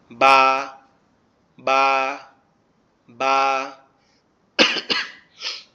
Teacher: এরপরে বা যে অক্ষরটা আছে, বা এই অক্ষরটা কিভাবে উচ্চারিত হয়, এটা হচ্ছে আমাদের দুই ঠোঁটের নরম জায়গাটা একে অপরের সাথে লেগে আস্তে করে পৃথক হয়ে যায়, যেমন বা, বা, বা।